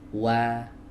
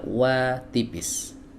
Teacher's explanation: huruf wawu di sini adalah wawu ghairu maddiyah, berarti dia keluar dari dua bibir. Ya, dua bibir yang dimajukan. Seperti ini, kemudian di atasnya ada fathah. · di atasnya ada fathah. Nah, berarti dibuka dengan bukaan tipis. Wa, jadi bukan wa, jangan wa tebal.